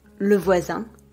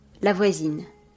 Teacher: the e is not pronounced, but the consonant before it is going to be pronounced, whereas it is silent in the masculine form.